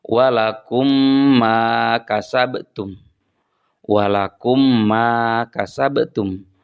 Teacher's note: Jadi yang satu mimnya mati atau sukun, kemudian yang satu lagi mimnya hidup. Maka cara membaca huruf mim pertama dimasukkan ke dalam huruf mim yang kedua. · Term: idg mislin, idgham mislain